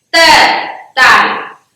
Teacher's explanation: T, it's like T, but without aspiration. The end of tongue pushes to the upper teeth and makes sharp T without aspiration.